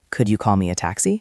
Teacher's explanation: Listen to the rise in the voice at the end.